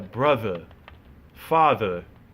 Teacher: well my accent is thick the ER is always pronounced like ah